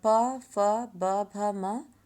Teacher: प फ ब भ म, ओंठ या ओंठ से स्पर्श होकर ये निकलते हैं।